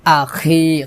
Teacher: খটা খলকে শেষ থেকে মোটা করে উচ্চারণ করতে হবে, আখি, খি এখানে 3 আলিফ টান হবে।